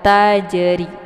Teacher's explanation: Jadi, ini merupakan huruf qalqalah ya. Jadi, jimnya dibaca secara dipantulkan berbeda dengan huruf yang lain ya. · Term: qalqalah zughro